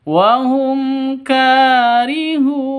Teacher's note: Ka panjang 2 ketukan karena ada alif diawali dengan fathah. Bentuk kaf kalau berbentuk kaf seperti ini artinya itu kafnya dibaca panjang karena ada alifnya ini.